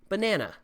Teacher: it's stressed on the second syllable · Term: word stress